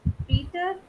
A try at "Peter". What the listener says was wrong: Also, Peter is English. can you correct that again? Make it German. Peter is English. Peter.